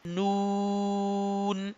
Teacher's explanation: Tip of tongue touches with the gums of upper front six teeth. कि जब हम अपनी जुबान की नोक को ऊपर वाले छह दांतों के पीछे गम्स के साथ टच करेंगे तो नून अदा होगा।